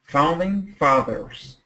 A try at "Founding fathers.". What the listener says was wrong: Good. Keep that TH. Good TH. Perfect.